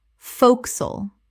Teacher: Two syllables only. One of the most dramatic reductions in English.